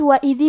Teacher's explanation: کلمت وَإِذِ میں الف کے نیچے زیر ہے، دال کے نیچے بھی زیر ہے، لہذا ہمیں یہ دونوں زیر کو ظاہر کرنا ہے، اور دال کی ادائیگی زبان کے سر اور اوپر والے دانتوں کے اندرونی کناروں سے ہے